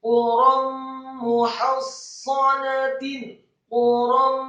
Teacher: Quram muhassanatin, quram, kata quram, qafnya dibaca tafkhim tebal marfu' atau dhammah 1 harokat, kemudian ra-nya dibaca tafkhim tebal dengan harokat fathah tanwin.